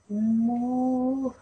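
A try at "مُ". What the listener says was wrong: Okay, you don't need to raise your round your mouth too much, okay?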